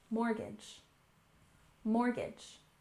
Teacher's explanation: Even though there's a T in this word, you won't often hear native speakers pronounce the T. And we stress the first syllable, mortgage, mortgage.